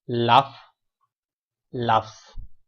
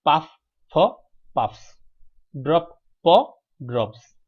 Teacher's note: ভার্বের শেষ অক্ষরের উচ্চারণ যদি ফ, ক, ট, প এর মতো হয় তাহলে এস অথবা ইয়ে যুক্ত হলে তার উচ্চারণ হবে স এর মতো